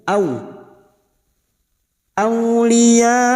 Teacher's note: Kita melunakkan fathah yang bertemu waw sukun au, seperti bertemu dengan huruf u dalam huruf abjad, setara dengan huruf u, au. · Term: huruf layin